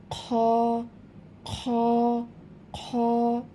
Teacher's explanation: এই খ হরফটি হচ্ছে কণ্ঠনালীর শেষ ভাগ হইতে উচ্চারিত হয়, একটু খড়খড়ে আওয়াজ হবে।